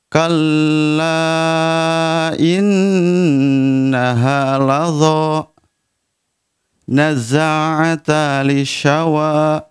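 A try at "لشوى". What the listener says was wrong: Masukkan, nazza'atal lishawa. Nazza'atalli. Talli. Masuk ke lam. Nazza'atal lishawa.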